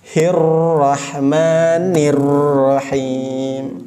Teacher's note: Dan huruf ro-nya ada getaran dan ada tahannya. Ditahan karena ada tasydidnya.